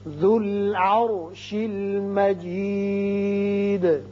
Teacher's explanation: ذال کی پیش لام سے ملے گی. را ساکن ہے لیکن پہلے زبر ہے اس لیے اس کو پر پڑھیں گے · یہ واو زائدہ ہے، یہ نہیں پڑھیں گے. ذال کی پیش لام سے ملے گی